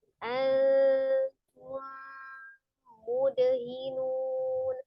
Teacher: mim sukun bertemu dengan huruf mim ya, idgham mimi. Maka diidghamkan ke dalam huruf mim yang kedua ya. Disertai dengan gunnah, ditahan 2 sampai 3 harokat.